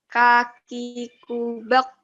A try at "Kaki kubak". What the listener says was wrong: Bak itu kamu agak belakang Kak-nya. Coba sekarang untuk mempermudah kamu menganalogikan K itu letaknya di mana coba? K coba K dulu. K. Kaki kubak. Keluar angin nggak pas kita ngomong bak? Keluar angin nggak yang sebelumnya? Bak. Keluar angin nggak? Keluarnya dikit ya. Tapi keluar gitu ya. Oke, benar ya. Karena K itu anginnya keluar.